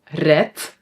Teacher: red we pronounce with a t, but we write a d